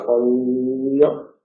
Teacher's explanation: Si el aire sale por los lados, pollo es la lateral.